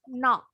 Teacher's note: Kalau orang Amerika bunyinya agak lebar.